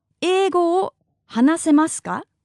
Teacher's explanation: the sentence ends in a ka and the intonation is raised